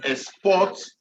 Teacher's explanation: So whenever it is a noun, then the stress has to be on the first syllable. But if it is a verb, the stress has to be on the second syllable.